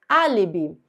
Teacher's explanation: Todas as proparoxítonas são acentuadas, então esse A é a sílaba mais forte, trata-se de uma proparoxítona